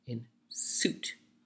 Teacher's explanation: in suit, there's a hard T sound, and thus the vowel in front of it is a little shorter, in suit. So it's not sweet, sweet is something else.